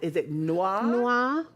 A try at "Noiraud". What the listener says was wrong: Noiraud. Like the word noir, but just add an O.